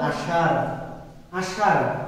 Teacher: তাহলে এই যে আপনি বলছেন আষাঢ় মূর্ধন্য স দিয়ে, কিন্তু আপনি বলার সময় বলছেন আষাঢ়, অর্থাৎ তালব্য স দিয়ে। তালব্য স এর উচ্চারণ যেমন, মূর্ধন্য স এর উচ্চারণও একই রকম ভাবে আপনি করছেন।